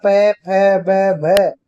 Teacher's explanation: प फ ब भ, ये सब किससे बोले जाते हैं, ओष्ठ के द्वारा बोले जाते हैं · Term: प वर्ग